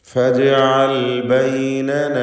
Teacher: ജീമിൻ്റെ സുക്കൂൻ ഖൽഖല സൂറ നൽകി ശബ്ദം ഹറക്കത്ത് പോലെ ചലിപ്പിക്കണം.